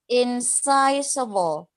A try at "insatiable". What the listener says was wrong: No. It's not sigh. It's say. Say. A.